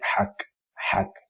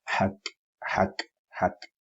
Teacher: you make the h a little bit sharper and stronger